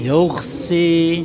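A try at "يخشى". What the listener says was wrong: Oke, jangan sampai ada yuh. Itu ada anginnya menjadi huruf kha.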